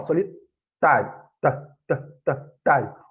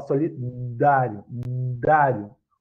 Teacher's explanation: O som T é um som surdo, e o som D de solidário é um som sonoro.